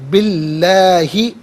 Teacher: کسفن او تأتیہ، تأتیہ میں حمزہ ساکن ہے، اسے جھٹکے کے ساتھ پڑھا جائے گا، تأتیہ، بی اللہ، با کے نیچے زیر، اس سے اس میں اللہ کی حرف لام کے ساتھ ملائیں گے، درمیان میں سے الف یعنی حمزہ کو حذف کیا جائے گا۔ اس میں اللہ کی حرف لام سے پہلے والے حرف کے نیچے زیر ہو تو اس میں اللہ کی حرف لام کو باریک پڑھتے ہیں، زبر یا پیش ہو تو پر پڑھتے ہیں، یہاں زیر ہے تو باریک کر کے پڑھا جائے گا۔